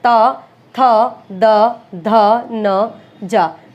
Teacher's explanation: जीवा नीक यानी जीभ की जो नोक है वो दांतों को स्पर्श करेगी। ऊपरी दांत की पंक्ति का स्पर्श करती है। · जीभ की जो नोक है वो दांतों को स्पर्श करेगी, ऊपरी दांत की पंक्ति का स्पर्श करती है, ठीक है। ये नहीं कि बिल्कुल दांतों के बीच में आ जाएगी, दांत जहां से शुरू होता है उस वाली पंक्ति को स्पर्श करती है। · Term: दंत्य